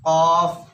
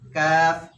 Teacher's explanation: কফের উচ্চারণ মোটা হবে, কাফের উচ্চারণ হালকা হবে